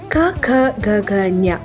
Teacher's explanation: ಕ ಖ ಗ ಘ ಞ ಈ 5 ಅಕ್ಷರಗಳನ್ನು ಕಂಠವ್ಯ ಅಂತೀವಿ. ಯಾಕೆಂದರೆ ಇವನ್ನು ಉಚ್ಚರಿಸುವಾಗ ಗಂಟಲಿನಿಂದ ಶಬ್ದ ಹೊರಡುತ್ತೆ.